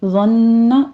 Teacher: ज़न्न व पूर पढ़ा जाएगा, ज़न्न जुबान की नोक सनाया ओलिया यानी सामने वाले जो ऊपर वाले 2 दांत हैं इनके सिरे के साथ लगाइए, सीटी की आवाज़ नहीं आनी चाहिए।